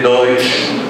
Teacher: no Rio de Janeiro é uma marca essa palatalização do S